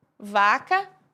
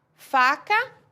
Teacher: Vocês devem ter observado que nós fazemos exatamente o mesmo movimento e a única diferença é que o som sai com voz e sem voz, e isso estabelece uma diferença entre as consoantes, entre os pedacinhos de palavra que nós produzimos. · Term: sons com voz